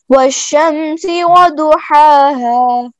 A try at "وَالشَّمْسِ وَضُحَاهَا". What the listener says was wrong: اچھا اب یہ دیکھنا ہے یہ دونوں ہا اور ہا ان کو ایک جیسا لمبا رکھنا ہے, یہ نہیں ہے کہ پہلے کو کم اور دوسرے کو زیادہ, ایک جیسا. والشمس وضحاها. والشمس وضحاها.